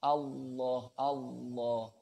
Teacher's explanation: Dia yang harus tak urui yang mengucapkan Allah ini ya. Jadi lamnya pakai lam jalalah tafkhim, tebal. Tebal itu lidah tengah itu diangkat ke atas.